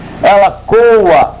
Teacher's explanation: Ela coa, forte, verbo coar. E o ela, nesse caso, vai ser átono.